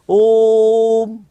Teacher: अब ओ को कितना खींचा जाएगा जितना इसको तीन बार बोला जाता है ओम इसलिए इसे हम क्या कहते हैं पुलित स्वर कहते हैं